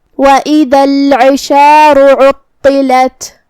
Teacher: یہاں حرف الطا ہے، طا حروف تفخیم میں سے ہے، ہمیں اسے بھاری آواز میں منہ پھلا کے ادا کرنا ہے · عین کی ادائیگی حلق کے درمیان والے حصے سے ہے تو ہمیں عین کو وہیں سے پڑھنا ہے اور جو کہ اس کے نیچے زیر ہے تو ہم عین کو زیر سے ادا کریں گے.